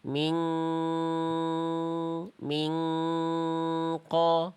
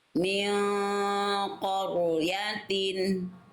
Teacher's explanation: Tebalkan ikhfanya. Jadi ketika samar dengung itu pangkal lidah huruf qof-nya naik biar bunyinya tebal